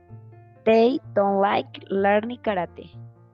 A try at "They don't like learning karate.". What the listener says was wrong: Karate. Very good.